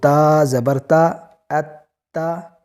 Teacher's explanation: اس انداز سے تشدید والا حرف جو ہے وہ 2 مرتبہ پڑھا جاتا ہے